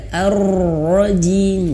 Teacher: ro-nya ini getarannya sampai habis, artinya sampai selesai getarannya, tapi getarannya tuh pelan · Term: huruf ro